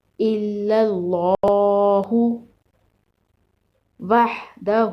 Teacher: ہا کی آواز صاف آئے گی، ہا کو حلق کے درمیان سے پڑھیں گے، اور گول ہا پہ الٹا پیش ہے، الٹا پیش کو ایک الف کے برابر لمبا کر کے پڑھیں گے۔